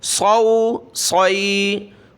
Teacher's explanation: صاد واو زبر صو، صاد یا زبر صوی، صاد کو موٹا تو کرنا ہے لیکن مجہول نہیں پڑھنا، صوئے نہیں پڑھنا، صو صوئے نہیں بلکہ صو صوی۔